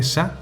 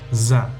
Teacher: la consonante /sa/ es sorda, no vibran las cuerdas vocales cuando se pronuncia. Su equivalente sonoro es /za/, con esa vibración.